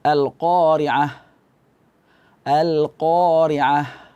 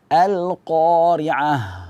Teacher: Jadi ha itu ketika dia waqaf, maka dia harus ada suaranya. Jangan kita waqafkan dengan angin saja.